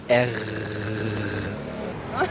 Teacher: J'ai l'impression qu'on fait racler le son sur le haut du palais.